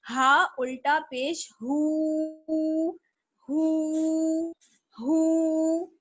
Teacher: تو ہا جو ہوتا ہے ہا, یہ چھوٹی والی گول چشمی ہا سینے کے حلق کے سب سے نیچے والے حصے کی طرف سے ادا ہوتا ہے